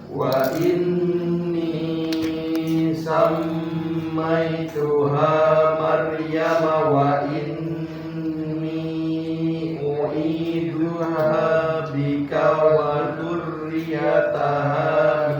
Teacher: Hati-hati kaknya nggak panjang, bika nggak panjang, ya. Nah, bikanya kaknya dipendekkan.